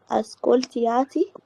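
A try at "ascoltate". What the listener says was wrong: مفيش الياء دي، اسكولتاتي اسكولتانو على طول. اسكولتاتي اسكولتاتي مفيش الاي، انت قلت اسكولتياتي، لا مفيش اي. اسكولتاتي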